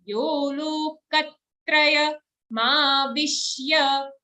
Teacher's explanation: Katraya, because ka has an aghat. We are putting extra emphasis on that sound.